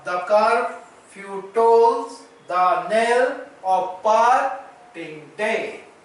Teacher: the was unstressed, car was stressed, few is unstressed, toll is stressed, the is unstressed, nail is stressed, off is unstressed, par is stressed, ting is unstressed, day is stressed. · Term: iambic